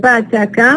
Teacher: So they are, all of them are voiceless because we don't have vibration of the vocal cords, and all of them are stops because we stop the air completely and then release it. But when it comes to the place of articulation, they don't share any feature here.